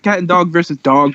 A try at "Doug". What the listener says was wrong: Did you just say Doug as dog?